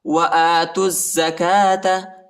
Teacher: زا پر شد آیا ہے اور زا کو شدت کے ساتھ پڑھنا ہے، وو اور یہ دونوں الف نہیں پڑھا جاتا۔